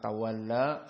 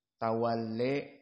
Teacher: antara tawalla fathah dengan tawalle mendekati kasrah, maka tawalle. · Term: at-taqlil